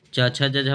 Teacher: च छ ज झ बच्चों तालु से बोली जाती है